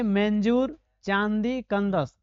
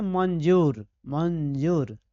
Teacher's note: स्वर के बाद आवे वाला व्यंजन का ध्वनि नाक से निकलता है। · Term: अनुस्वार